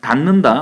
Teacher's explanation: 디귿이 니은으로 바뀌어서 기준점 니은하고 똑같아졌죠 · 그드부의 디귿입니다. 디귿이 비음, 니은 앞에서 니은으로 바뀌었죠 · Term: 완전동화, 비음화